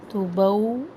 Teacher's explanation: واولین ہے پورا ہونٹوں کی گلائی سے